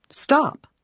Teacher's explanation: When you say the P, all you're doing is blowing air through your lips. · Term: voiceless sound